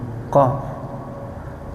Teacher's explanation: Contoh saya ambil contoh yang terdiri dari satu huruf misalnya huruf qaf. Qaf itu cuma satu makhrajnya. Di mana dia pangkal lidah